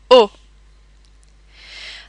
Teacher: notice that the o sound in french is very rounded and clipped